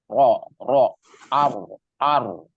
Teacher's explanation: Huruf ro itu ada sifat takrir namanya, berulang bergetar ya, berulang atau bergetar. Tapi getarnya atau berulangnya suara ro itu nggak banyak, cukup 2 getaran atau 3 getaran aja.